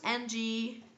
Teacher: With the NG, the sound is more, you can feel it much more in your nose, okay? So, your nose, NG, no nose, just N.